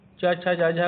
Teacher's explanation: यह 5 व्यंजन तालु से बोले जाते हैं, इसी कारण इन्हें तालु वर्ण भी कहते हैं।